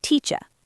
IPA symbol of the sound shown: ə